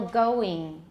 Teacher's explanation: the vowel in the English ing ending sounds more like E. So for example, going, it's not going.